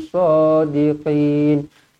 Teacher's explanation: Qin man arid li sukun dibaca dengan 2 atau 4 atau 6 harakat.